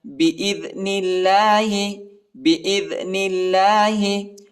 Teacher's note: نون کو لام کے ساتھ ملائیں گے اور اللہ کے نام کو باریک پڑھیں گے، نرم پڑھیں گے، ٹھیک ہے.